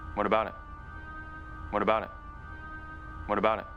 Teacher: When we connect what to about, this T at the end of what becomes a flap T, just as the T at the end of about when we connect it to it. And we end this question with a stop T in it.